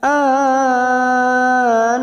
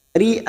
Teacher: huruf hamzah jangan sampai diseret ya, jangan sampai an, harus tegas karena dia memiliki sifat syiddah